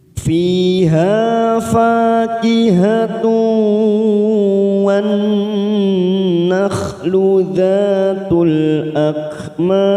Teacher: Fi kasrah bertemu ya sukun 2 harokat, ha fathah diikuti alif 2 harokat, fa 2 harokat fathah diikuti alif.